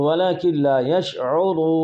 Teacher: نون کا لام ادغام متقاربین تام جائز ہوا ، ادغام صغیر متقاربین تام جائز ہوا، تو ولکن لا یشعرون،